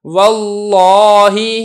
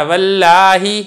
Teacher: لفظ اللہ سے پہلے زبر ہے تو ہم نے لفظ اللہ کے لام کو پر کیا ہے، یعنی موٹا کر کے پڑھا ہے۔